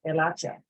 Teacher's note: remember that H is silent